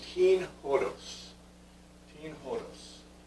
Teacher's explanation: greek has an aspirated vowel sound usually with o